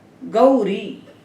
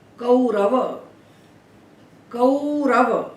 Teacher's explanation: जो आई और औ हैं इनको आई औ ही बोलना चाहिए। इन्हें ए और ओ ऐसा नहीं बोलना चाहिए। गौरी ये औ की मात्रा है।